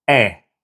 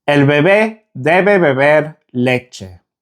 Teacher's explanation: The Spanish E is very short and sharp.